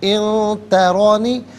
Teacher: ان ترانی، ان میں نون ساکن ہے اور اس کے بعد تا حرف اخفا ہے تو نون ساکن کو یہاں پر اخفا کے ساتھ پڑھا جائے گا، یعنی ناک میں آواز لے جا کر گنگنانا۔ ان ترانی، ترا میں را پر زبر ہے، را کو پر کر کے پڑھا جائے گا